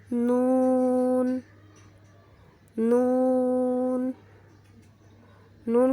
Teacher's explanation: جب زبان کا کنارہ اوپر والے مسوڑوں سے ٹکر کھائے تو نون ادا ہوتا ہے۔